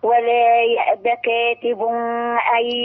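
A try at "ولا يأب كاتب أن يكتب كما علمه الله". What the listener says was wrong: لا منقفش على يكتب. منقفش على التنوين. منقفش على التنوين.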